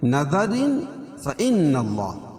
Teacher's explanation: تنوین کے بعد حروف اخفا کے 15 حرفوں میں سے فا ہے تو یہاں ناک میں آواز کو چھپا کر پڑھیں گے